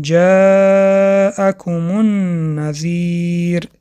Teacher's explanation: الف را 4 حرکت کشیدیم: جاءکم النذیر. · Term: مد متصل